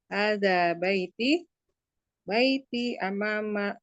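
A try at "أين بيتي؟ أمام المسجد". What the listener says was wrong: Baiti, hanya baiti bertanya. Mm-mm. Intonasinya yang salah, kurang tepat.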